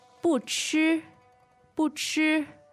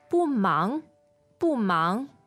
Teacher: the 不 there, the fourth tone remains there.